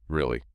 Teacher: The flat tone is the sound of a raised eyebrow